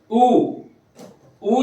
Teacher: समजा एक मी बोलून दाखवतो, ऊ जेव्हा मी बोलतो तेव्हा कंठात इथं हात लावून बघा, इथं व्हायब्रेशन पण होतं आणि होठ पण माझे गोल होत आहेत. बरोबर. म्हणजे कंठ आणि ओठ, कंठ ओष्ठ्य, अशा प्रकारचा हा कंठ ओष्ठ्य.